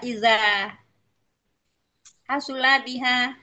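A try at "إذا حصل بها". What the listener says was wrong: Fa'ala bukan hasula fa'ala waznnya.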